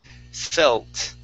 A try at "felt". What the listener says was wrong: instead of saying fell, okay, you want to curve your tongue and have your tongue touch a little bit closer to your teeth.